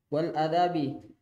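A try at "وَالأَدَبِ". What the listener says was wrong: danya panjang Panjang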